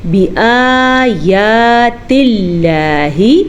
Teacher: لفظ اللہ کو ہم باریک پڑھیں گے لفظ اللہ کے پیچھے زیر کی وجہ سے